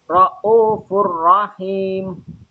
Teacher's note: Ra'ufur rahim termasuk bacaan idgham bila gunnah. Alasannya ada dhamma tanwin ketemu dengan huruf ra. Cara membacanya masuk tanpa dengung.